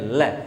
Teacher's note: लय के उच्चारण में जीभ कहाँ पे जाकर के टच करती है, ऊपर वाले दांतों को जाकर के टच करती है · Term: पार्श्विक